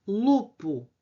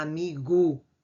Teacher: Havia uma consoante surda, as consoantes surdas são aquelas que são produzidas sem vibração das cordas vocais, que se tornou sonora, com som. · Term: Sonorização